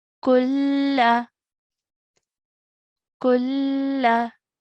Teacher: you can hear that I'm not making that noon sakin sound